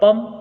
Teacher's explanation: प के ऊपर अनुस्वार होने के कारण से इसे भी दीर्घत्व प्राप्त होगा